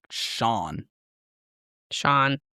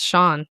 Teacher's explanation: The SI produces like an SH sound, and the A is like a long aw sound.